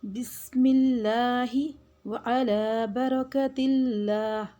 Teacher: برکت اللہ اس میں ہم لام کو مجہول نہیں کریں گے لام سے پہلے زیر آ رہی ہے تو لام کو موٹا نہیں پڑھیں گے